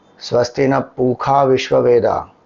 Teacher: some of them you will see they won't pronounce sha